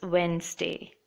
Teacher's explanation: just remember to leave out the D